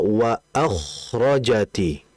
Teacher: menipiskan huruf hamzah, menebalkan huruf k · Kita harus menipiskan huruf hamzahnya dan menebalkan huruf kha-nya. Karena hamzah merupakan sifat yang dia adalah tarqiq, yaitu tipis. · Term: tebal